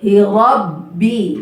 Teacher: ra tebal, ba-nya tipis. Hi Rabbi, bi ya.